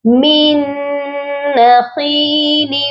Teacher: جب بھی مشدد اور ساکن حرف اکٹھے آتے ہیں ہم ساکن کو نہیں پڑھتے، ڈائریکٹ ہم نے میم کو نون مشدد کے ساتھ ملانا ہے، اور یہاں پر ہم پھر ادغام بھی کریں گے، یعنی ادغام مع غنہ ہوگا.